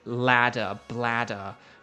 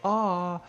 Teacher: there's the short sharp ah and there's the sort of more drawn out a sound like when you go to the doctor and you put the thing on your tongue that's like say a.